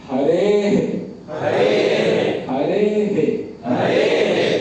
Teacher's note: मतलब हे उच्चारण नहीं करना है, छोटा सा हे आएगा, क्योंकि पूरा हे की तरह नहीं आएगा। यही है, विसर्ग का जो उच्चारण है वो ह को लेकर के आएगा, लेकिन समय उस ह के उच्चारण का आधा देना है, इसीलिए अर्ध कहा जाता है, हाफ नहीं लगना चाहिए।